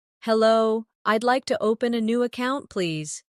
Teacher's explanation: Notice the stress on open and account, so the purpose is clear.